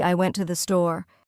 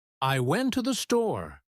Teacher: The words to and the become so weak that they almost disappear. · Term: unstressed words